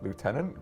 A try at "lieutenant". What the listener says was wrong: there is no f it's got a u in it